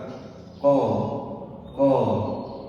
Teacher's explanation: pangkal lidah dengan langit-langit lunak. Jadi di belakang itu ada langit-langit lu lunak. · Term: huruf q